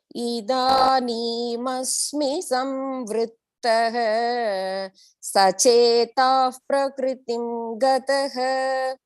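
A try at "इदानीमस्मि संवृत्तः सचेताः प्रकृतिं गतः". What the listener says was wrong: Excellent. Your pronunciation is on the dot, especially in the bhavaha, rudha, everything was perfect.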